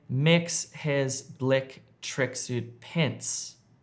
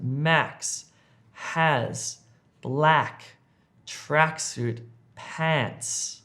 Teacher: Try to extend the sound of the e to an a sound.